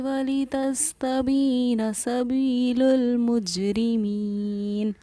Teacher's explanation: जब या साकिना से पहले ज़ेर हो तो या हुरूफ मद्दा कहलाती है और इसको हम एक अलिफ के बराबर खींचकर पढ़ते हैं